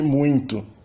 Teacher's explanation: E também a analisação de muito, que provavelmente se trata de uma nasalização por contaminação. O M inicial nasalizou o ditongo seguinte.